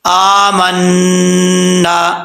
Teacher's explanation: آگے ہے آمنا، حمزہ کے اوپر کھڑا زبر ہے، ایک الف کی مقدار اس کو لمبا کریں گے. نون کے اوپر شد ہے، غنہ کریں گے نون مشدد کا، اور آگے الف بھی ہے، ایک الف کی مقدار لمبا بھی کریں گے.